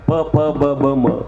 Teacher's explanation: प फ ब भ म याला ओष्ठ म्हणतात. ओठाशी संबंध येतो